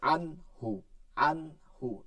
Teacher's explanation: গুন্না ছাড়া স্পষ্ট করে পড়তে হবে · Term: ইজহার